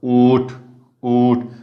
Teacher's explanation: जरी रस्व ऊ असलं तरी उच्चारण ते लांबट झालेलं आहे, ऊठ, हे लांबलं, हे मात्र शेवटचं काय झालेलं आहे, निवृत्त उच्चाराचं झालेलं आहे. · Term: लांबट उच्चाराचं